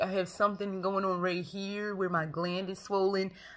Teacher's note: you can hear this vocal fry in my voice